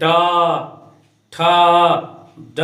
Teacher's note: मूर्धन्य वर्ण जो होता है इसका मूर्धा से इसका उच्चारण होता है